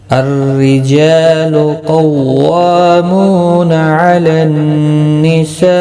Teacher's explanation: جا الف مدہ ہے، ایک الف کی مقدار کے برابر کھینچ کر پڑھیں گے، لو کو کھینچنا نہیں.